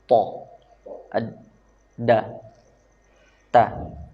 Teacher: Dan huruf ta, dal dan ta darinya ujung lidah menempel ke pangkal gigi seri atas. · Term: torful lisan